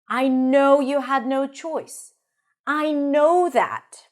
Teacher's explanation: the second time it's repeated, it is usually a little higher in pitch